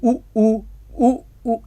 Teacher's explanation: कंठ तो उच्चारित हो ही रहा है, कंठ के साथ साथ ये ओष्ठ तो स्पर्श कर ही रहा है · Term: कंठ ओष्ठ